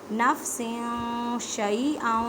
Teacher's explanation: اقفا کا مطلب ہے چھپانا، اب تنوین کی آواز کو آپ نے چھپانا ہے ایک الف کی مقدار میں